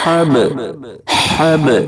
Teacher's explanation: با حروف قلقلہ کے 5 حرفوں میں سے ہے اور ساکن بھی ہے اس لیے با میں قلقلہ ہوگا، یعنی آواز لوٹے گی۔ حب حب اس طرح سے آواز کو لوٹا کر پڑھیں گے۔